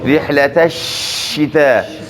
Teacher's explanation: د شین د ادا کولو په وخت کې اواز دننه په خوله کې وپاشل سي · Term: تفشي